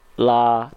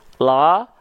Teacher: huruf lam huruf yang tipis maka kita lafalkan bukan la tapi sambil Senyumin tipis-tipis